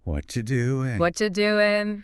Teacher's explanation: And doing loses its G.